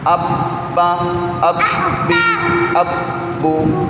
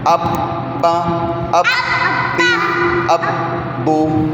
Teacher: اب کر کے تھوڑی سی آواز میں بریک لگ جائے، پھر وہیں منہ بند رہے، پھر با جب آگے با کو پڑھیں گے پھر منہ کھلے. یہ نہیں کہ بند کر کے منہ کھول کے پھر دوبارہ، ایسے نہیں کرنا. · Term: شد